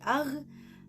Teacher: qosiyah lahuyah atau disebut juga dengan dorsovelar. Nah, hurufnya ada 4, yaitu kho dan akan berbunyi ah.